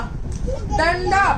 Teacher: डंडा बोलते समय मुख और नाक दोनों से निकली है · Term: अनुनासिक